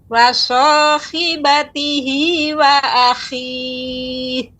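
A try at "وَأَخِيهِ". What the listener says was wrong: Taib, kha begitu juga ketika dibaca kha-nya banyak. Wa akhi, lebih tampak lagi kha-nya. Nah, nanti terus dilatih Bu ya untuk kha-nya lebih nampak lagi.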